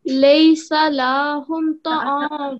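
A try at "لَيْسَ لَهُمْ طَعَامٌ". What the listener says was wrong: No, don't prolong this. Laysa lahum.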